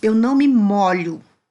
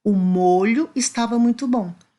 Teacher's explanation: o ó aí eu pronunciei de um som aberto